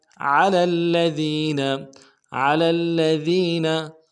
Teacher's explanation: लाम को अगले लाम के साथ मिलाना है, लाम के ऊपर तशदीद जोर देंगे , अगले लाम को नरम से अदा करेंगे, दाल को बारीक